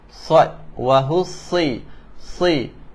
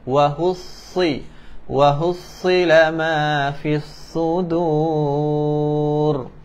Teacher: huruf sad ni kita kena bunyi safir ataupun dia kena bunyi tebal sikit